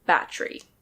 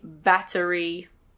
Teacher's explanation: in the UK and Australia we often don't pronounce the E. We say "battry".